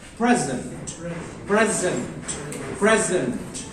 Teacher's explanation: When we represent it as a noun, its stress lies on the first syllable.